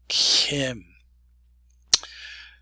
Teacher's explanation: we're going to have a new sound for K, and that is Kim. It's a fricated K.